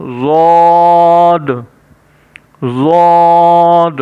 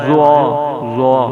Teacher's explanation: ضاد کو ہم بڑی آواز میں موٹا کر کے پڑھیں گے، جبکہ ضا کو ہم نرم لہجے میں اور نرم آواز میں موٹا کر کے پڑھیں گے